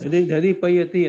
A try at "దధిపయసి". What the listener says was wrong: పయస్ శబ్దం సకారాంతం అండి, అందువల్ల దధిపయసి అని ఉంటుంది.